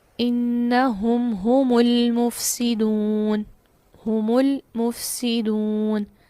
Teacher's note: اسی طرح سورۃ البقرہ آیت نمبر 12 میں دیکھیے، انہم ہم المفسدون، ہم المفسدون، میم کو کیا کیا، لام چونکہ آگے بھی ایک ساکن تھا، 2 ساکن 2 کلمہ میں جمع ہوئے، پہلا ساکن میم جمع کا تھا تو اس کو ضمہ دے دی